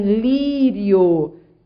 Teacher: é uma semi vogal e uma vogal da mesma sílaba só que é um ditongo crescente porque você foi da mais fracas n vogal para mais forte